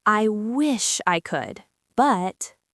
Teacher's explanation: I want you to focus on the word wish. We're going to stretch that vowel sound. · pitch goes up slightly on the word wish and then gently falls